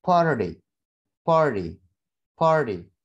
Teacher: Karena ada R, mengapit, ada suara R dan vowel, yang mana itu mengapit suara D, suara T. Sehingga T-nya tadi ini, suara T di sini, bisa kita rubah menjadi suara D. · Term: flap